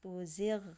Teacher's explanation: Tapi yang benar gho-nya jelas, tuzigh yaitu maksud idharkanlah atau jelaskanlah